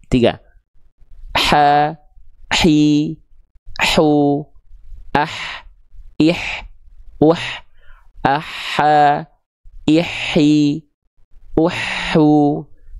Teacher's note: huruf H kecil dilafalkan tepat dari bagian tengah tenggorokan